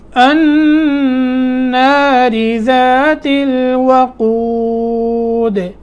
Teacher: النار نون میں قلقلہ کرنا، نون مشدد ہے، را باریک ہوگی، نیچے زیر ہے. ذات الوقود، دال میں قلقلہ کرنا ہے سکون کی حالت میں، جیسے پیچھے قلقلہ کرتے آئے ہیں.